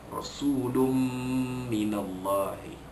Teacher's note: Ra sulun, su sin waw depan su man asli, lum minallahi tanwin pada lam, lam dua depan lun bertemu dengan min, hukumnya ialah idgham ma'al gunnah, memasukkan bunyi tanwin ke dalam huruf mim dengan dengung